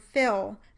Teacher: I would normally use the dark L at the end of the word fill